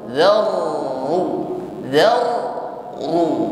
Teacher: di sini ee nampak sifat yang menyertainya yaitu takrir irtiadful lisan harus ada getaran ya di ujung lidah yang kedua getaran pada huruf ra di sini tafkhim ya tebal